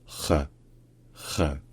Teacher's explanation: Ensuite, le Ach-Laut, c'est le son R, qui ressemble à la J espagnole, par exemple. Et qui ressemble aussi un petit peu au R français, mais en sourd, donc les cordes vocales ne vibrent pas, et également un petit peu plus haut dans la bouche. Donc, R, R.